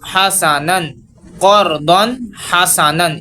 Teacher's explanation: ہا زبر ہا قر دن ہا، سین زبر سا حاسا، نون دو زبر نن حسنن قردن حسنن. ادھر ہم نے غنہ نہیں کیا، اس کو بالکل آرام سے غنہ کیے بغیر ادا کیا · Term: اظہار